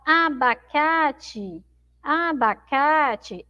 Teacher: a sílaba mais forte é o cá então é sente ali no final tem um som fraco ó